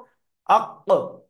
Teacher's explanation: তো কফের মাখরাজ হলো, জিভ আছে না, জিহ্বা, জিহ্বার গোড়া উপরের তালুতে লাগবে। তাহলে কফের শুরুতে হামজা নিয়ে আসবো, কফটাকে সাকিন করে দেবো, কি পড়বো, আক।